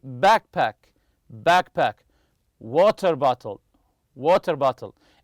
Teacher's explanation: they're made of two separate nouns the stress always remember this the stress goes on the first part of the compound noun